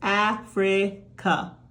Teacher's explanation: Try these words with your students and have them notice how we don't say the common sound of the A. We slide into a Schwa.